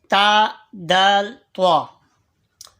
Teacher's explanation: ان کا مخرج زبان کا سرا سامنے کے اوپری 2 دانتوں کی جڑ سے مل کر ادا ہوتے ہیں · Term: حروف نطعیہ